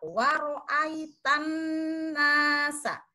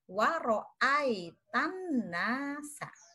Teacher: Maka pada wa ra'aita dibaca ai, bukan ae.